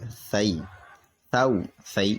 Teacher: یعنی دونوں دانتوں کے بیچ میں سے اپنی زبان نکال کر کے ادا کریں گے، نوک جو ہے اوپر کی دانتوں کی طرف لے جائیں، اور ورنہ یہ سین ہو جائے گا، جو کہ حروف قریب الصوت میں پھر امتیاز نہیں ہو پائے گا نا۔ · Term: ثا